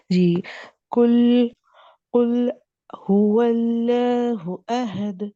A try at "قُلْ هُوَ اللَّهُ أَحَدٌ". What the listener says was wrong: اللہ کا لام موٹا پڑھے. قل هو اللہ. ہاں پھر سے LAW اللہ.